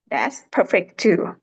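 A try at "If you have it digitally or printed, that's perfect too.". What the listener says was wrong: Hey, nice job.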